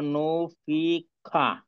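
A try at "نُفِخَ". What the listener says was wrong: নুফি। হ্যাঁ, খা হবে না, কিন্তু খ হবে।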